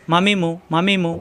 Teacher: মিলানো ঠোঁট ছেড়ে দিয়ে আবার মিলালেই হয়ে যায় মিম